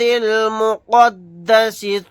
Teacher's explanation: قاف کو بھی یہاں پر موٹا یعنی پر پڑھیں گے